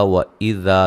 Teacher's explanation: وَإِذَا ذال کو نرم ادا کریں گے، الف مدہ ہے